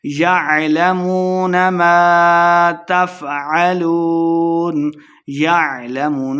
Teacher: واو مدہ ہے، دو حرکات اس کو لمبا کر کے پڑھیں گے